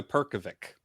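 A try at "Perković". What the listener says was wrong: Perkovich. because you pronounce the C like a CH.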